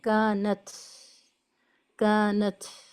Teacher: فکانت تا میں پھر سے وہی کہ کانت کر کے ہمیں آواز کو نہیں روکنا ہے، بلکہ ایک ساؤنڈ آف ایئر فلو باقی رکھنی ہے